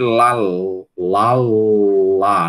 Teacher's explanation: A gente percebe que a língua tá um pouquinho mais estreita, né? Na hora que você disser lá lá, você vai perceber que que a língua se estreita um pouco e o a passa pelos lados da língua, né? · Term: L claro